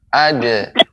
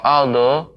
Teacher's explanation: Huruf dal ketika dikolkolahkan dia tidak tebal. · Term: istifal